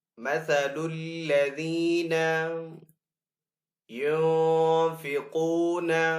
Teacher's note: نون ساکن کے بعد فا ہے حروف اخفا میں سے تو یہاں پہ اخفا والا غنہ کریں گے